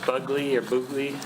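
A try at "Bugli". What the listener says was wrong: G is silent.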